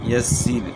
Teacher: را ساکن سے پہلے زیر ہو تو را باریک ہوتی ہے